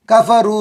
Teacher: کفرو رو میں واو مدہ ایک الف کے برابر کھینچیں گے